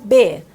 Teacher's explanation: ele é uma consoante oclusiva vozeada bilabial